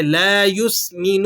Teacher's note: نون پر پیش ہے تو آپ اسے کھینچیں گے نہیں